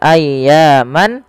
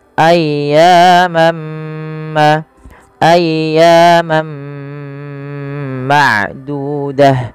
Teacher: Maka ketika ada tanwin bertemu dengan huruf mim, yaitu langkahnya adalah masukkan tanwinnya kepada huruf mim dan diganti bunyinya. Awalnya ayyaman menjadi ayyamma ayyam ma'dudah. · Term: idgham